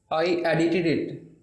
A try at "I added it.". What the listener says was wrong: I एडिटेड it की बजाय डी को ख़त्म किया, सो हम कहेंगे आई एडिड it. I एडिड it.